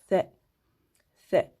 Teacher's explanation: Et comme je vous l'ai précisé souvent, donc ça se prononce avec le bout de la langue. On met la langue en fait entre les dents, le bout de la langue entre les dents.